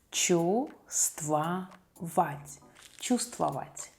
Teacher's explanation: We don't pronounce the first letter V.